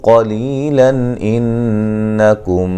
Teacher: نون تنوین کا اظہار ہے، غنہ نہیں کریں گے · نون مشدد پہ غنہ ضروری ہے